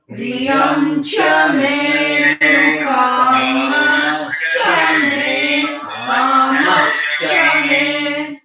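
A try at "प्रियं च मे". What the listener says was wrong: You did the first May. First May you did Udata. First May is Anudata.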